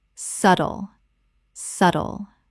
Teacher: The B is completely silent. two syllables only